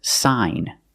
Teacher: GN at the end of the word the g is silent too the pronunciation is sign and you have the long I sound like hi